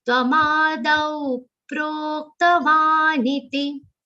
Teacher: I've seen this in exams also, people will miss this aghat. So dau is a long sound, complete the long sound and give a very subtle aghat of pa.